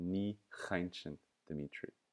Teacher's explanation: Now after ni, we have to mutate the k at the front of caint. It goes from k to ch. It's a very close sound.